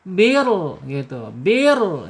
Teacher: Rnya jangan e banyak bergetar karena mempunyai sifat inhiraf ya. Inhirab condong ke dalam lidahnya ditarik ke dalam ketika takrir ketika bergetar